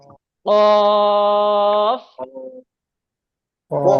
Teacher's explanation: Star চিহ্নর মানে হলো এখানে মুখ গোল করে পড়তে হবে। তো কফ, কফ উচ্চারণ হয় গলার ভিতর থেকে, কলকলা করে বের অফ বের করতে হবে, কলকলা মতো, কফ।